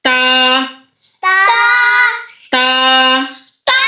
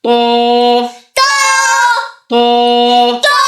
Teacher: تا کو باریک پڑھا اور تو کو موٹا